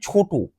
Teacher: ছোট ছ টা অনেকক্ষণ উচ্চারিত হবে তাই ছ টা হচ্ছে মহাপ্রাণ আর ট টা অল্প উচ্চারিত হবে তাই ট টা হচ্ছে অল্পপ্রাণ